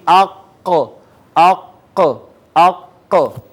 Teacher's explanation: کوے سے متصل زبان کی جڑ اور اوپر کا تالو ملے تو قاف ادا ہوتا ہے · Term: قاف کا مخرج